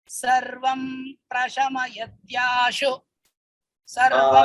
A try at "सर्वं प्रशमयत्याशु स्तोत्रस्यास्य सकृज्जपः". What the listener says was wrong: आशु स्तोत्र आशु स्थगनीयं नास्ति आशु स्तोत्र इत्याद्युक्तमनुक्तं वा रोगदोषादिसम्भवम् सर्वं प्रशमयत्याशु स्तोत्रस्यास्य सकृज्जपः